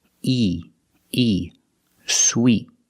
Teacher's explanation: in both words we use the long e sound like in green beans the top and the bottom of the mouth are very close together